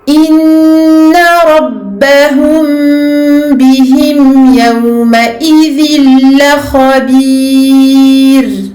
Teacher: Et je remonte au niveau du ra. Je remonte le fond de la langue pour bien emphasiser le ra ici qui est à la fin de ce verset.